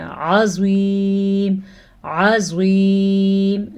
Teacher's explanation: زوا کو پھر سے موٹا پڑھنا ہے کیونکہ حروف مستعلیہ میں سے ہے، اور عین کے تلفظ کا دھیان رکھنا ہے.